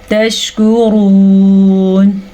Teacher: کاف نرمی سے پڑھیں گے کیونکہ یہ باریک کاف ہے، را کو ہم پر پڑھیں گے کیونکہ را کے اوپر پیش ہے۔